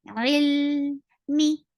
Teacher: Ain from your throat for kasra, give E sound. Attached with lam.